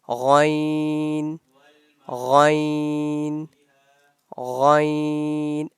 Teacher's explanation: the sound of ghain comes out from the top part of our throat.